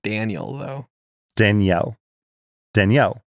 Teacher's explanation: it is a combination of two names Danny and Al whereas in the north it tends to get combined into one syllable more like Daniel